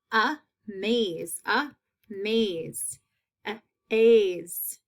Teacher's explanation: you can hear the long a in that second half that makes it a second syllable word